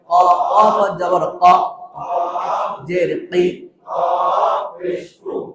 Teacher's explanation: জিহ্বার গোড়া থেকে মোটা ভাবে আদায় হবে